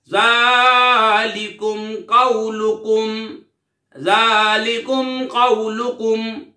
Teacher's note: ذالکم قولکم، اظہار شفوی یعنی غنہ نہیں کریں گے. ذال کھڑا زبر ذا، لام زیر لی، ذالی، کاف میم پیش کم، ذالکم، قاف واو زبر قو، لام پیش لو، قولو، کاف میم پیش کم، قولکم، ذالکم قولکم، اظہار شفوی.